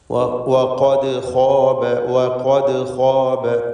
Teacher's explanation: വഖദ് എന്ന പദത്തിലെ ദാലിൻ്റെ സുക്കൂൻ ഖൽഖല സുഗ്റ നൽകി ശബ്ദം ഹറക്കത്ത് പോലെ ചലിപ്പിച്ച് വ്യക്തമാക്കേണ്ടതാണ്.